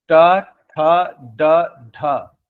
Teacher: जो आपका दांत के ऊपर का मांसल पोर्शन है ना थोड़ा सा वहां पर जिभवा टकराती है। वह मूर्धा है। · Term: मूर्धन्य व्यंजन